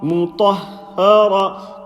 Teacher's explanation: Mim empty, ta full mouth, ha empty, ra full mouth.